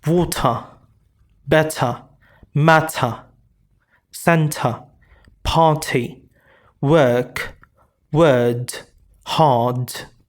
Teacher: Like water water As you can notice here very clearly that I'm not saying as water water I'm not pronouncing the R at the end. I'm reducing or minimizing the use of the R, the postvocalic R.